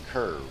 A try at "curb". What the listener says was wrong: Call that a curb. Curb. Oh, you keep on saying curve, like going driving through a curve.